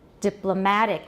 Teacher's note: the stress is on the penultimate syllable